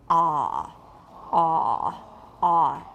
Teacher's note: let's make a very very low very very back ah · cardinal vowel five ah has been defined as the lowest most back vowel position without producing pharyngeal friction